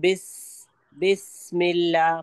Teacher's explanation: स का साउंड में सीटी वाली सरसराहट होती है।